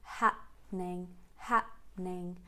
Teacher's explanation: once you say hap, you keep the mouth closed and then you carry on with n. Happening, happening.